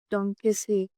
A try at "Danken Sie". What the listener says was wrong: Danken Sie. Okay, there's an N here.